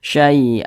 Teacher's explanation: jadi suaranya itu kita tahan kita panjangkan sejenak